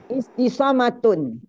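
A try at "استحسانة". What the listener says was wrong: Bukan, hurufnya perhatikan, huruf nun bukan mim. Ibu tadi harusnya istisonatun, Ibu cakap istisomatun, nunnya menjadi mim.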